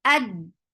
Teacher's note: Ad, hamza is very sharp, no flow of sound for fatha open jaws attached with dal. Dal is sharp too. Ad, the sound cuts off very sharply.